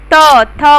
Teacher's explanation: जब त बोलेंगे तो जो जीभ है और ऊपर वाला दांत है एक में टच करेगा · ऐसे व्यंजन जिन्हें बोलते समय दांतों पर अधिक बल लगता है अथवा जिन्हें बोलते समय जीभ ऊपर वाले दांतों को लगती है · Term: दंत व्यंजन